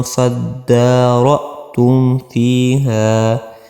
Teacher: یہاں پہ آپ نے اخفاء نہیں کرنا، آپ نے اظہار کرنا ہے، کیونکہ کہ میم ساکن کے بعد فا آیا